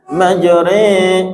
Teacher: Majre ayyan huwa bil fathi nahwal kasrah, menyondongkan suara fathah ke kasrah. Majre atau alif ke dalam ya.